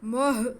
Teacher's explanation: میم پہ پیش ہے, میم کا پیش ہم جو ہے وہ ہا کے ساتھ ملائیں گے کیونکہ ہا ساکن ہے